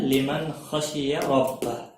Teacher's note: کھڑی زیر ہے، اس کے حرکات کے بدلے میں اس کی آواز دگنی ہو جائے گی ایک الف کے برابر